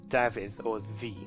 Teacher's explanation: Another quick Welsh lesson, the double D sound is pronounced th, as in Davydd or the, pronounced by putting the tongue just behind your upper incisors. It's a bit like the TH sound in English, although it has a bit of a buzz to it, a little bit like the difference between an S and a Z.